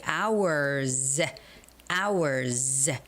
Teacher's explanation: But when you say hour, hour, er is a voiced sound. So, when you put an S behind it, it's got to be hours.